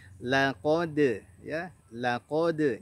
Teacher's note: Laqad, lamnya tipis, qafnya tebal, dalnya tipis. Berikan qalqalah kepada huruf dal yang sukun tersebut.